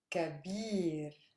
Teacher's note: Stress lies on bir, a super heavy syllable